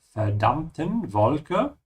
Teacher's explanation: be careful with the V, it's always pronounced like an F